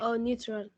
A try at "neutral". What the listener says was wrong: Not neutral, neutral. You are making neutron and neutral in a single word. Neutral.